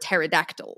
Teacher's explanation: The silent p in pterodactyl, by the way, wasn't silent in Greek, but it is silent in English